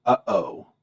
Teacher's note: you can hear the glottal stop when you say uh oh uh oh the pause between up and o